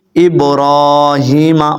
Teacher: آپ نے را کو لمبا کرنا ہے، میم کو آپ نے درمیانہ رکھنا ہے